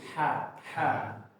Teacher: Kalau a itu sampai menyempit, kalau ha itu cuma mundur sedikit ya. Jadi bagian yang kerasa tadi a dia cuma mundur sedikit ya. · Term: ha tipis